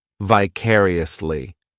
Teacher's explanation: The third syllable, it's like that letter I just has that E sound, and the fourth syllable has the schwa